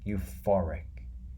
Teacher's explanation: And the stress, the loudest part, is in the middle, the for part.